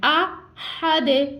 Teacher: हा को हमने ठंडी सांस के साथ अदा करना है। ये हल्क के दरमियान वाले हिस्से से अदा होगा।